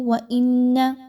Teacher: حمزہ اور نون کو آپس میں ملاتے ہوئے نون مشدد کا غنہ کیجئے، آواز کو ناک میں لے کر جائیے